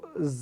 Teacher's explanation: زا کا مخرج یہ ہے کہ زبان کی نوک کو نیچے والے جو دانت ہیں ان کی جڑ کے ساتھ لگائیں گے تو زا ادا ہوگا